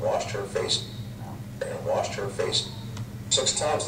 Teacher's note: washed which should sound different will sound the same the vowel will sound the same